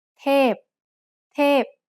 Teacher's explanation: means an angel. เ ท พ is a falling tone.